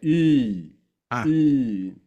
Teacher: temos um som que tá entre o i e o u